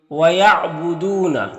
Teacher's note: وَيَعْبُدُونَ، یہاں پر واو ساکن سے پہلے دال کے اوپر پیش ہے تو واو مدہ ہوگا۔ واو مدہ کو ایک الف کے برابر کھینچ کر پڑھتے ہیں۔